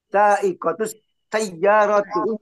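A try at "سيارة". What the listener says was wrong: Dari mana ada tuknya? Saikotu, ada tuknya itu dari mana datangnya? Kan di situ tidak ada tak kalau terlihat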